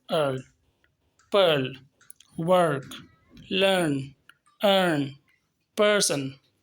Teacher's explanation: इसमें अ का साउंड आता है, थोड़ा इलोंगेटेड होता है और टंग को थोड़ा सा ट्विस्ट किया जाता है।